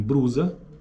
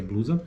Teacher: presença de R em lugar de L em grupos consonantais